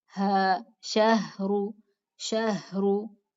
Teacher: اور جو ہا ہے وہ اقصا حلق سے بغیر دباؤ کے نکلتی ہے. اقصا حلق یعنی جہاں درمیان میں آپ نے ہاتھ رکھا تھا نا گلے کی، جہاں وائبریشن ہوگی تھی، اسے نیچے لے جائیں ہاتھ کو، جہاں پہ گڈھا سا محسوس ہوتا ہے نا، گڑی ہوئی جگہ، تو وہاں پہ اگر ہاتھ رکھیں تو وہاں سے ہا نکلے گا.